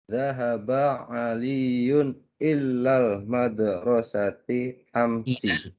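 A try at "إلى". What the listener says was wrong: Laisa illa. Kalau illa pakai tasydid artinya beda. Artinya kecuali. Jadi ila.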